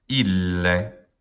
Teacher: Ille, long syllable, and then a short syllable.